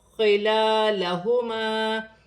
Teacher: خا حروف حلقی میں سے ہے، حلق سے ادا کیا جائے گا. لام پر کھڑی زبر ہے، ایک الف کی مقدار کھینچ کر پڑھا جائے گا، الف مدہ بن رہا ہے، اسے بھی ایک الف کی مقدار کھینچ کر پڑھا جائے گا.